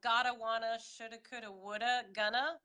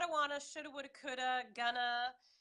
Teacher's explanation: we're joining everything together going to want to all of that we're gonna take the two and make it into a schwa